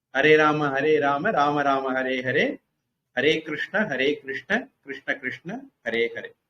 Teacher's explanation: Here also you note Rama, short form, Krishna, short form, not Rama, Krishna, because they are in vocative case, eighth case, Sambodhana Pratham. So you should not lengthen the vowel, last vowel.